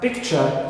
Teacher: It means inside the word, when a sound influences another one within the same word, like in picture, right, picture. So here we have ta and ya, they assimilate within the same word, clear, to create the sound cha. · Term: assimilation